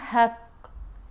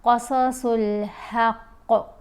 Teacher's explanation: اب قاف کے اوپر ہم وقف کر رہے ہیں، یہ جیم ہے نا، یہ اوپر چھوٹا سا جیم، یہ علامت ہے کہ وقف جائز ہے، یہاں پر ہم وقف کر رہے ہیں۔ جب وقف کریں گے تو قاف کو ساکن پڑھیں گے، پھر قاف کے اوپر قلقلہ بھی کریں گے۔ اگر آپ پڑھتے ہیں نا حق تو آپ نے قلقلہ ادا نہیں کیا۔